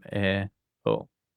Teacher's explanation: these 2 vowels are not a diphthong, so we separate them as 2 separate sounds